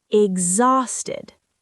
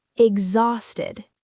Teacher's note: And the stress is on the second syllable.